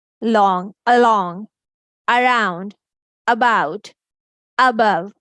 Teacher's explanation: Letter A is saying the shua sound because this is unstressed syllable.